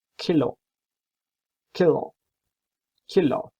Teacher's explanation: That's a plosive sound. You have to use your back tongue and lips separated. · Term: velar